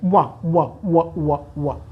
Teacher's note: दंत और ओष्ठ, अर्थात वकार के उच्चारण में जिह्वा दांतों से स्पर्श करती है और ओठ आपस में स्पर्श होते हैं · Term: दंत्यौष्ठ्यः